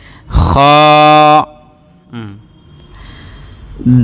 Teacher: খ, এটা গলার শেষ ভাগ থেকে আসবে, মানে অলখম থেকে আসবে আর কি।